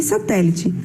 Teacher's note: palavra satélite que nós temos a última a penúltima ea antepenúltima a sílaba mais forte está na antepenúltima posição